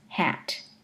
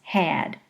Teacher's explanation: the vowel is shorter before voiceless consonants hat the vowel is longer before voiced consonants had so just listen hat had there's a measurable longer duration of